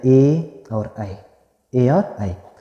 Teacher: तो इसमें जो है ए और ए और ऐ, इनका जो उच्चारण स्थान होगा वो कंठतालु होगा, कंठ से भी होगा और तालु से मिलाकर होगा, कंठतालव्य या कंठतालु कहते हैं।